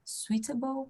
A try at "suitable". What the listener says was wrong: Suitable, não pronuncia o I, tá? Suitable.